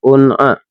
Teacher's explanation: huruf ain ini kan huruf halqi teman-teman ya, huruf halqi yang harus keluar dari tenggorokan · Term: idhar halqi